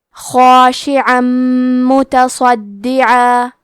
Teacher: آخری میں عین پہ تنوین زبر ہے، پھر حرف المیم آتا ہے کلمت متصدعہ. میم حروف الادغام بغنہ میں سے ہے تو ہم یہ حکم کو غنہ اور تشدید کے ساتھ ادا کریں گے